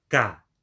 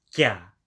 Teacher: So apparently in Hokkien it is not palatalized, but in Mandarin it became palatalized.